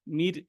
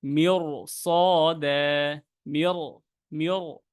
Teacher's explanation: মিয়র মোটা করে ফেলতে হবে যখন রটা ধরবেন। কারণ কি এখানে সদের কারণে আমরা মোটা করে ফেলেছি।